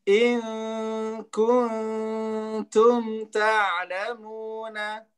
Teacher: jadi in dengan kun itu nunnya nun far'iyah. Ya, sudah ke blender dia dengan kaf ya. In dia sempurna ke hidung. In kun, kalau kun ketemu dengan ta dia separuh-separuh.